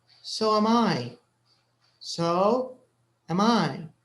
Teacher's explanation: when you say it you don't say so um I no am is not stressed so you need to say it a little faster